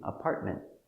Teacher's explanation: we finish with an T we don't hear the T